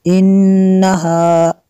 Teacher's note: اگر یہاں پہ وقف کریں گے تب بھی اس کو کلا ہی پڑھیں گے، اگر ملا کے پڑھیں گے تب بھی اس کو کلا ایسے ہی پڑھنا ہے ہم نے۔ انہا، نون مشدد ہے، یہاں پہ غنہ کرنا ہے